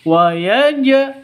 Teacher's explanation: Jim hurufnya Qalqalah karena sukun berarti bacaan Qalqalah ada di Tengah qqalah sugro dipantulkan ke huruf jimnya